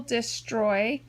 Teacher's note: we hear the oi in the second syllable